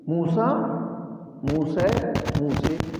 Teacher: اس میں فتحہ، تقلیل اور امالہ تینوں پائے جاتے ہیں